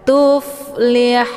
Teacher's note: Haun ini dibaca panjang, boleh 2, 4 sampai 6 harokat karena ini dinamakan dengan mad arid lisukun. Tandanya ada mad tabi'i, yaitu ada waw sukun sebelumnya harokat zummah.